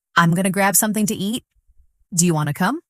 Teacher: Did you notice how going to became gonna and want to became wanna?